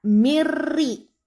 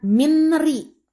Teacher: Jadi suara N hilang, masuk ke suara R. Jadi bacaan yang benar mirri, bukan minri. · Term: idgham bila guna